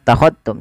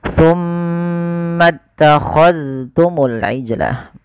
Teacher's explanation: jangan diidgamkan ke huruf ta. Tapi dalalnya ditampakkan dengan jelas.